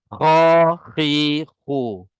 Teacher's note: pangkal lidah kita dia akan terangkat sikit untuk tebalkan Kha